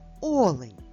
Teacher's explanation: Олень з наголосом на першому звуку олень.